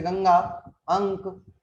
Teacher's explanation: अनुस्वार एक व्यंजन ध्वनि है जिसका उच्चारण करते समय ध्वनि नाक से निकलती है। इसका चिन्ह ऊपर बिंदी है, जैसे गंगा, अंक आदि।